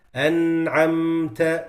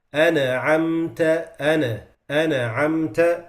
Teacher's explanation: Third mistake is giving it qalqala when it has sukun. So instead of saying أنعمت, they say أنعمت أنعمت.